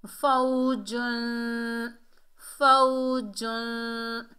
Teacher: اور جیم کے اوپر دو پیش کی تنوین ہے، دو پیش کی تنوین کے بعد حروف اقفا کے 15 حروفوں میں سے سین آ رہا ہے، تو یہاں پر اقفا ہوگا، اقفا حقیقی، نون ساکن اور تنوین کے اقفا کو اقفا حقیقی کہتے ہیں۔ اس میں نون کا کچھ حصہ ظاہر ہوتا ہے اور کچھ حصہ چھپا ہوا ہوتا ہے